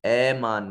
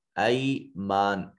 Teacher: الا میں جو الف خالی از حرکت ہے ما قبل مفتوح ہے، الف مدہ ہے، اور یہاں الف خالی از حرکت ما قبل مفتوح الف مدہ ہے، یہاں یا ساکن ما قبل مفتوح یہ یا لین ہے، نرمی سے ادا کریں گے، اے مان نہیں کہیں گے، ای مان کہیں گے۔